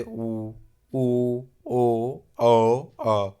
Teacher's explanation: वृत्ताकार स्वर ऐसे स्वर हैं जिनके उच्चारण में होठों का आकार गोल हो जाता है